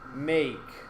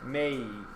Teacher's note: you hear the y right before the k